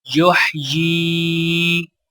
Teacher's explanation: یا کو یا ساکنہ کے ساتھ ملاتے ہوئے ایک الف کے برابر کھینچ کر پڑھا جائے گا